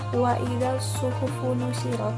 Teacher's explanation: alif lamnya ini tidak dibaca, jadi langsung dimasukkan ke dalam huruf shad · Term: alif lam syamsiah